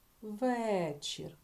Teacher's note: звук е став під наголос Я його дуже чітко чую